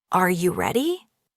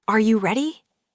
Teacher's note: For example, when a native speaker asks a yes or no question, like, "Are you ready?" the pitch of their voice goes up at the end